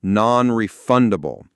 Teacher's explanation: The pronunciation is pretty straightforward, but the stress is key. It falls on the second syllable of refundable